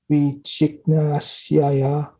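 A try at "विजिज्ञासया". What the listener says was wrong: Gnasya? No, Gyasya, like Gyan. Gyasya, and that word Gyan is inside. Vichigyasaya.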